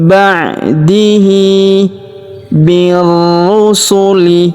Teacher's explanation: huruf hi kita panjangkan dua harakat karena terdapat alif kecil di bawahnya